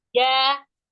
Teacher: itu lidah kita Ya, nggak nempel kayak jim. Kalau jim kan nempel banget dengan langit-langit nggih, atas.